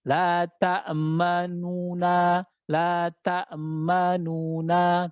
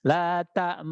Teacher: Memberikan isyarat monyong, pertanda itu huruf dhammah di sana. Tapi tidak menyebutkan harokat dhammahnya. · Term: ismam